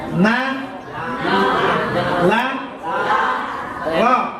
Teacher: Ujung lidah bertemu dengan gusi gigi bagian atas